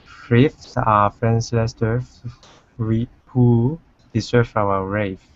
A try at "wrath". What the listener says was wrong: Great. That was a good one. The last word there is actually wrath with an